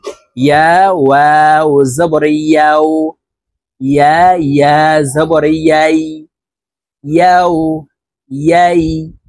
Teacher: ইয়ার উচ্চারণ জিহ্বার মধ্যখান থেকে পড়তে হবে